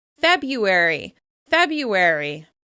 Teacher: You've definitely heard this when talking about months of the year, since February is usually pronounced without that first R sound. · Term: haplology